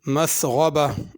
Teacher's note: غین کو پر کر کے پڑھنا ہے